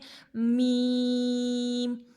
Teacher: میم کا بھی مخرج ہے دونوں ہونٹ اور میم کو بھی ہم لوگ 3 الف لمبا کریں گے